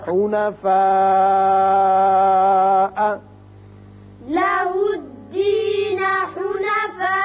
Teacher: مد متصل ہے، اس کو آپ 5 حرکات کھینچیں گے